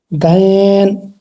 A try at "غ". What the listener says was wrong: گین نہیں ہو، حلق سے نکالیے، غائن، اور اندر سے غائن، گین نہیں، غائن،